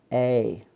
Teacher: It's 2 sounds, moving vowel. So you actually have to move your tongue and your jaw making this A. · we start with the Spanish a and go up to the i. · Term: diphthong